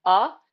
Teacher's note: of our mouth it's going to be affecting our brain so we're going to make like an uh sound really back in our throat like uh and then ooh it's going to be like uh